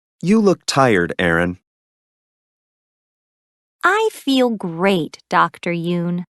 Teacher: There is usually falling intonation and a pause before the name. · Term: Intonation with direct address